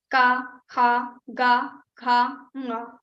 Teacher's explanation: If you recite or if you say ka, kha, ga, gha, nga, all five sound will be produced from your kantha. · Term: ka group